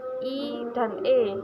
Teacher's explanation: vokal yang dihasilkan oleh gerak turun naiknya lidah bagian depan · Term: vokal depan